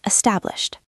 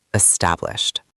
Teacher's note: And finally, establish. It ends with that shh sound. So the ed sounds like a t.